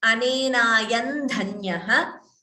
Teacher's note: Here also you could optionally combine the sandhi and chant it as Anenayan dhanyah. So this anuswara followed by dha becomes n.